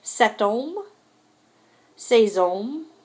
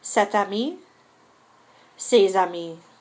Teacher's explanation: There is liaison after set and say when the next word begins with a vowel sound, so that just means you're going to hear that T and that S.